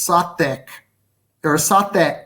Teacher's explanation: the actual the root of this word ultimately is satik or sate with a glottal stop at the end